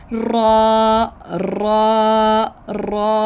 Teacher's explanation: ज़ुबान की नोक को दांतों के अंदर जो मसूड़े होते हैं साथ लगे हुए, हल्के से वहाँ पे ज़ुबान लगती है और लगकर पीछे पुश्त की जानब मुड़ती है बैक। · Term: रा का मखरिज